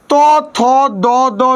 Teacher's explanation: ত, থ, দ, দ দন্তন্য, এগুলা কি ধ্বনি? এগুলো হচ্ছে দন্ত বা দাঁত দিয়ে উচ্চারিত হয়